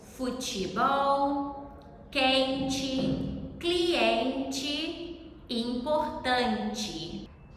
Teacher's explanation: when T comes before E in the middle or end of a word, if it is unstressed, it sounds like ch